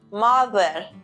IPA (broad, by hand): ˈmʌð.ɚ